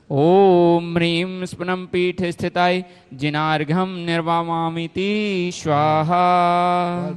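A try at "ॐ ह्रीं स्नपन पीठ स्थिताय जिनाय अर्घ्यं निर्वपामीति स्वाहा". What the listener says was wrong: तुम्हें बहुत अच्छा पढ़ना आ गया, बस कुछ नहीं करना है, थोड़ा इस स्पीड को थोड़ा धीमी रखना है और लंबा खींचना है। अक्षर को यदि लंबा खींचोगे ना तो फिर उच्चारण सही हो जाएगा और ये सब सीख जाएंगे।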